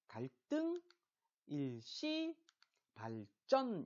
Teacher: 한자어인데 앞말 끝소리가 리을일 때 그 뒤에 그드브스즈가 끄뜨브스즈로 발음되는 것